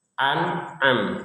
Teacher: Jadi jangan hamzah semua, jangan ain semua. Hamzah itu di bawah, tenggorokan bawah, ain itu tenggorokan tengah.